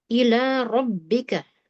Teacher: Perhatikan di sini huruf ra tebal, kemudian jangan sampai rabbika, nggak mau ya. Huruf ra dimurnikan betul-betul yang digetarkan lidahnya, tidak ada campuran gerakan bibir atau rahang